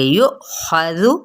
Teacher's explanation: خا کو پر پڑھیں گے، زال کو نرمی سے پڑھیں گے لیکن حرکات کو لمبا نہیں کرنا